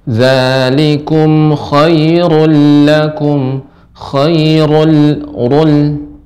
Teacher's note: Khairu di sini ru-nya tebal Ibu.